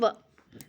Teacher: और वह जो है वो दंतोष्ठ व्यंजन भी कहा जाता है क्योंकि इसके उच्चारण में दांत और ओठों का परस्पर स्पर्श होता है